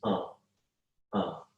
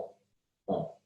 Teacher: See, it goes at the end. It's just you resonate the sound in your nasal cavity. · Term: pure nasal